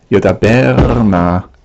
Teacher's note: But when the word is joined with a makef to the na, the main stress on yudaber is moved over onto na, and so so we would have a long vowel, a tsere is always a long vowel, in a closed unaccented syllable, and so that has been resolved by changing the tsere to a segol.